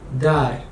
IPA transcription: daɾ